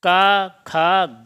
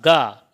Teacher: गा वर्ण जो है वो अघोष नहीं है, यह है सघोष।